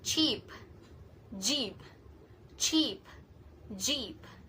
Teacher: Ch is voiceless while J is voiced, and they are same in manner and place of articulation, which is post-alveolar affricates. So it is sound using tip of the tongue and post-alveolar, the location behind the alveolar ridge, and the sound starts by holding the air like a small explosion and then slowly releases it with a hissing sounds.